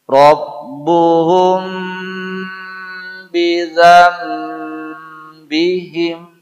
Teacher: Huruf mim tadi selain makhraj dia pada dua bibir, dia juga mengalir suaranya sebagian ke rongga hidung namanya gunnah.